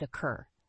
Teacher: the word occur has two syllables with the stress on the second syllable